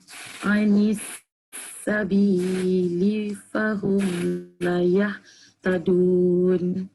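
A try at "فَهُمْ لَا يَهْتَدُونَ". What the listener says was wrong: Dah panjang sikit. Fahum la yahtadun. Fahum yang kita repeat. La dia panjangkan sikit.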